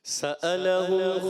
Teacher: سألهم حمزہ کی ادائیگی عین کی آواز نہیں ہے.